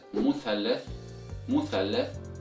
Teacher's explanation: letter Th is an interdental letter, which means a sound comes from putting your tongue between your both teeth. Now in Egyptian Arabic dialect, this letter is not pronounced with the Th sound, but rather with the letter Sin instead.